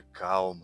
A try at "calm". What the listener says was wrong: Вообще-то не calm, а calm. L не произносится.